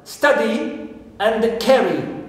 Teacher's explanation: so here we stress the first syllable because we have short vowel at the end